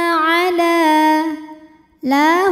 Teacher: karena lam berbaris fathah panjang ya maka huruf lam ini kita panjangkan dua harakat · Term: Mad thi'i muqadar